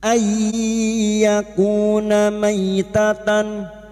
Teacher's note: illa ay. Nun sukun bertemu ya idgham bigunah, masuk dengan mendengung, masuk pada huruf ya dan mendengung selama 3 harakat.